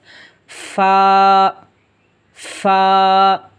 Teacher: ہم نے اوپر والے دانتوں کے کناروں کو نچلے ہونٹ کے تر حصے پر لگانا ہے.